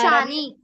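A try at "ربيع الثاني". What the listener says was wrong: शानी नहीं, शानी सा से। रबीउल सानी।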